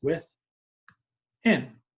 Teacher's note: I hear that in louder than the with, and we just go like this, with, in.